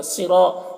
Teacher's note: صرا، صاد کو پر پڑھیں گے، یہ حروف مستعلیہ میں سے ہے